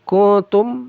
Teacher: nun sukun bertemu ta ikhfa juga disamarkan dan didengungkan